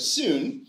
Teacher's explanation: if you hear my production of soon the first half of that vowel is quite fronted